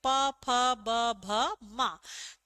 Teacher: हमारे जो दोनों होठ हैं वो आपस में एक दूसरे का स्पर्श करेंगे, तभी हम बोल पाएंगे प, फ, ब, भ, म। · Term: प वर्ग